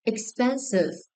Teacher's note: Second syllable is stressed.